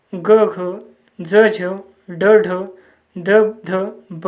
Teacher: मृदू व्यंजनांचा उच्चार करताना नाद घोष निर्माण होतो म्हणून त्यांना नाद व्यंजने असे म्हणतात.